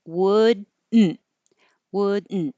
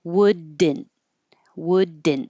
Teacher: you're going to have your tongue go up for the D position would and then hold it there don't release it